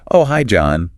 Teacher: that upward inflection shows she's pleasantly surprised to hear from him